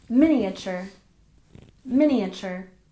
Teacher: number 13 miniature stress the first syllable